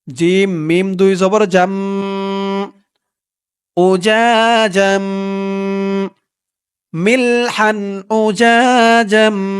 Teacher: এখানেও দেখুন উচ্চারণটা হবে জাম, কারণ তানবিনের পরে পরে দেখুন এই যে ইকলাবের হরফ বা আসছে, তাই এখানে এই জিম দিয়ে ছোট্ট একটা মিম ধরবে, মানে এই তানবিনটাকে মিম দ্বারা পরিবর্তন করতে হবে।